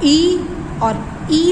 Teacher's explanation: जब आप ई और ई बोलते हैं तो आपकी टंग जो होती है वो तालव्य पे टच करती है